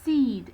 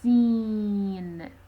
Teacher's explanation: when you pronounce the e sound, the air somehow goes out of the nasal cavity. So, the one which is not nasalized and the one which is nasalized are phones. · Seed, it is not nasalized, while when you say seen, it is nasalized. That is to say, when you pronounce the E sound, the air somehow goes out of the nasal cavity.